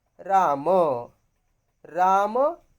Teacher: राम इस शब्द रूप के अंत में अ का उच्चार होता है